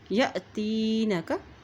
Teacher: यहाँ देखिए हमज़ा के ऊपर जज़म है। जब हमज़ा के ऊपर जज़म आती है तो वहाँ पर झटका दे के अदा किया जाता है